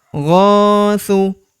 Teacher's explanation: Huruf gho kita panjangkan dua harakat karena terdapat tanda alif di depannya